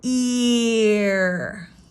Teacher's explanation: See the tongue, there's no rolling of the R at all. It just goes ear.